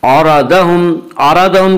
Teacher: आरादहुम के रा को पुर पढ़ा जाएगा। इसका कायदा यह है कि रा के ऊपर ज़बर और पेश आए तो रा को पुर पढ़ेंगे, रा के नीचे ज़ेर आए तो रा को बारी पढ़ेंगे।